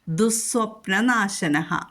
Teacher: വിസർഗം കഴിഞ്ഞിട്ട് സ്വപ്നനാശനഹ എന്നുള്ളതുകൊണ്ട് നമ്മൾ അവിടെ ദുസ് എന്ന് പറയും